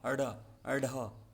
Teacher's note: तो इन्हें जो है वो द्विगुण या उत्क्षिप्त कहा जाता है। इन्हें बोलते समय जीभ ऊपर उठकर झटके से नीचे आती है। उत्क्षिप्त का अर्थ होता है फेंका हुआ।